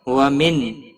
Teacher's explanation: نون ساکن کے بعد حروف حلقی کا حمزہ آیا ہے، اظہار حلقی ہوگا، گنہ نہیں کریں گے